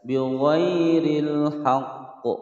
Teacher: Bighairil haqq ada huruf qaf kemudian disukunkan karena waqaf, ini kita baca dengan memantulkan huruf qaf, sebab huruf qaf adalah huruf qalqalah, namanya qalqalah kubra karena berada di akhir kalimat.